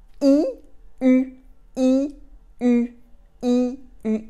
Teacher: you can go from the E to go to the U by closing your lips